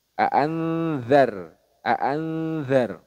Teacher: itu di ujung lidah dengan ujung gigi seri atas aanzar jadi ketika mendangungkan posisi makhrajnya sudah siap-siap ke huruf Dal ini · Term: Ikhfa Hakiki